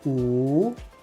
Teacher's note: 五 means it's a third tone. It goes down and goes up.